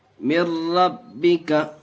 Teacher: نون ساکن کے بعد ادغام یرملون کے 6 حرفوں میں سے را آیا اور را کی صورت میں بغیر گنہ کے پڑھتے ہیں۔